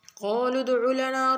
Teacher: قاف کو موٹا پڑھیں گے، دال پر کلکلا کریں گے